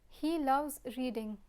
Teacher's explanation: if I lower my voice at the end of the sentence we have a declarative sentence